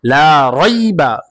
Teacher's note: জবরের পরে ইয়া সাকিন লিনের হরফ তাড়াতাড়ি উচ্চারণ হবে।